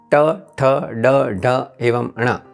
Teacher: मुंह में मूर्धा नामक जो स्थान है, उस स्थान पर जीभ का स्पर्श होने से जिस व्यंजनों का जन्म होता है उसे मूर्धन्य कहते हैं।